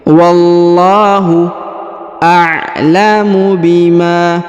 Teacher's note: Huruf lam dibaca, ditahan dan ditekan pada lafzul jalalah, lalu dipanjangkan 2 harokat ya, karena di atasnya terdapat alif kecil.